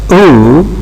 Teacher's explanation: So by means of the shape of the lips that you maintain in the production of any vowel, you can describe the vowel as being rounded, like U, because it is produced by rounding our lips.